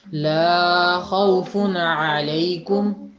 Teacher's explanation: لا کی آواز تھوڑی سی لمبی کر دی آپ نے، 1.5 گنا تقریباً